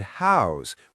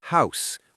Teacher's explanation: house with a voiced Z sound at the end, not house with the unvoiced S. Now that's because this is the verb form, meaning to give a place for a person or animal to live.